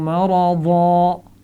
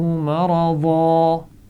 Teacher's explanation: مرضن تھا اصل میں، یہ میں نے پہلے بتایا تھا کہ اگر دو زبر ہوں گے تو ہم دو زبر کی جگہ وقف کرتے ہوئے الف مدہ یا کھڑی زبر کی آواز پڑھیں گے